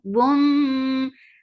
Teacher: idgham with gunna, and this gunna is kamila.